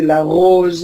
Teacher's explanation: All the r sound in French is produced with the uvula.